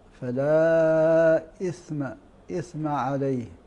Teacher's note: الثاء الساكنة نحرص على إعطائها صفاتها من ترقيق وهمس وغير ذلك من الصفات، فننطقها نطقا صحيحا: فلا إثم، إثم عليه.